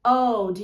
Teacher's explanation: esse D, ele é bem levinho, é só soltar um arzinho assim, como se você estivesse espirrando bem levemente